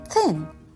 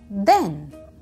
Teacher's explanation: The digraph made by T and H can be sounded in two different ways. One sound is th, as in thin, which is called the unvoiced th, and the other sound is the, which is called the voiced th, as in then.